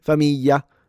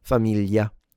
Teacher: the southern simplified variety is just a freaking Y.